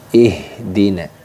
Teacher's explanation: Huruf H ini makhrajnya yaitu letaknya pada aqsal halqi. Aqsal halqi itu yaitu pangkal tenggorokan.